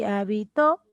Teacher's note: el acento se ubica en la última sílaba aguda